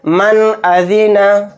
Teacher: بعد حمزہ آیا تو یہاں پر بھی اظہار کا قاعدہ ہوگا، نون کو ظاہر کر کے بلا غنہ کے جلد پڑھیں گے